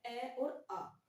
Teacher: पहला हमारा है ए और आ। ए और आ जो है उसका उच्चारण स्थान है कंठ।